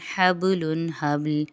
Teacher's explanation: یہاں پر با بیچ میں آ رہا ہے ساکن ہے، یہاں پر قلقلہ ہوگا۔